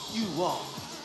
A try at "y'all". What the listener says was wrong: It ain't you all, it's y'all. Y'all. Say it from right here with some soul.